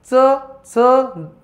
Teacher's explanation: च अ म्हणायच्या वेळेस ती जीभ आपल्या दाताच्या मागे तिथं टच टच होते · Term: दंत तालव्य